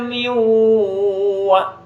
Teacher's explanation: nun mati menghadapi wawu yang dimasukkan asalnya min jadi miu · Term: idgham bi gunnah